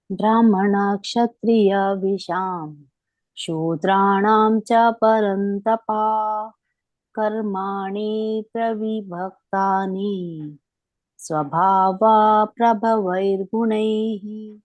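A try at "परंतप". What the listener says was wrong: ಇಲ್ಲಿ ತಪ ಪರಂತಪ ಮತ್ತೆ ಭಕ್ತಾನಿ ಅಂತ ಇದೆಯಲ್ಲ ಮಾತಾಜಿ, ಕೊನೆಗೆ ಅದು ಎಳಿಬೇಡಿ ಅಷ್ಟೇ, ಉಳಿದಿದ್ದೆಲ್ಲ ಸರಿ ಇದೆ.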